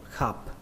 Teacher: Và âm thứ hai là âm khập. Xuống giọng các bạn nhé, khập. Các bạn thêm dấu nặng cho nó, khập.